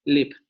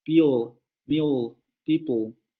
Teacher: Pero la palabra milk, la palabra milk y la palabra people se pronuncian con esa L oscura.